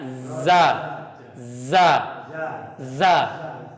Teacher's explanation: Za, tapi desisannya harus ditampakkan lagi ya.